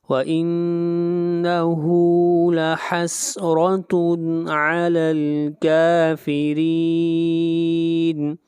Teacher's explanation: کاف کو کھینچ کر پڑھیں گے، یہاں پر مد اصلی ہے اور کافرین یہاں پر مد عارض وقفی ہوگی۔